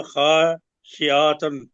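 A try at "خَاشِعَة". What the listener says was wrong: خاشعتن پڑھتے ہیں نا، خاشعہ، اس کو ہے بنا دیا کریں جی۔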